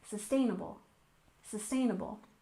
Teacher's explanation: we have sustainable living with a stress on the second syllable, sustainable, sustainable.